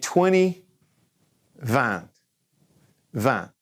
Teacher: N in the nose. Don't pronounce the T.